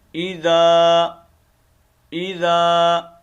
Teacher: یہ الف مدہ ہے، اس کو 1 الف کی مقدار میں ہم کھینچیں گے